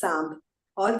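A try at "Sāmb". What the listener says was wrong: No, we don't write Samba. We write Samb. Samba would be, there would be a akar on A. That is not there. It's Samb.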